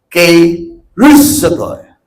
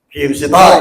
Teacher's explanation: Ang diin ng pagbasa niya sa second syllable yung rus.